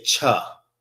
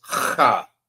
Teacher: The proper way to say this is ha. Sound like you hawking up some spit, or you trying to get something from the roof of your mouth.